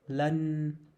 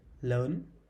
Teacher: So these two words are pronounced differently. So the short sound is not the long sound plus rising tone